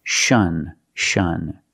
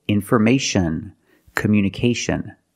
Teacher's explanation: Now let's talk about the pronunciation of T-I-O-N. Normally when you see T-I-O-N, the T is pronounced with a soft sh sound